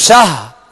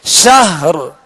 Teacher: آخر میں را کو ساکن کر کے آواز اور سانس توڑیں گے، یعنی را پڑھ کر صرف شاہ یوں وقف نہیں بلکہ شہر.